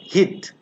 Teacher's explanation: It's a front vowel. It's a short vowel because there is no colon or no double dot. It's a half close.